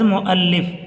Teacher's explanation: واو پر حمزہ ہے، واو کو سائلنٹ کر دیں گے اور حمزے کی آواز کو پڑھیں گے